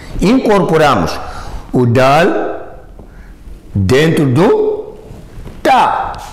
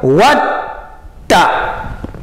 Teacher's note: Aqui o dal deixou de executar a sua função por causa do tá muxada. A leitura fica what tá.